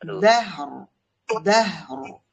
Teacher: হাটা স্পষ্ট উচ্চারণ হওয়ার পরে রর মধ্যে গিয়ে লাগবে